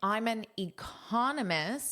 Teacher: So con is what you hear the most. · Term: syllable stress